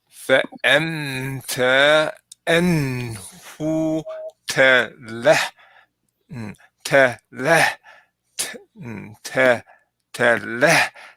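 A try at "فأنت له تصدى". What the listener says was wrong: Here it's like you're just saying the ha before the lamb. Talaha.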